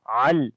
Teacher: عین کو گلے کے درمیان والے حصے سے پڑھیں گے